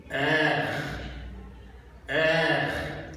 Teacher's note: La langue contre les incisives, les dents, en bas. La langue ne bouge pas. Alors, on prononce avec la gorge.